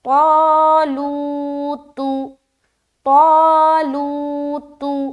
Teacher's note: الف مدہ کرتے ہوئے بھی موٹی رہے گی آواز، الف بھی موٹا ادا ہوگا۔ بتایا تھا جب بھی الف مدہ موٹے حرف کے ساتھ آئے تو الف مدہ بھی موٹا ہوگا، اور باریک حرف کے ساتھ آئے تو ہم باریک رکھیں گے۔